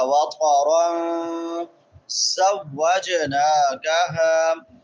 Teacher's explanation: را کے اوپر نون تنوین ہے، نون تنوین کے بعد زا ہے تو یہاں پہ اخفاء ہوگا ، وَقَرًا زَوَّجْنَاكَهَا، زا سختی سے، اور جیم پہ قلقلہ ہوگا،